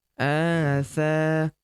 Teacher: Huruf Tha kita panjangkan 2 harokat karena terdapat tanda alif di depannya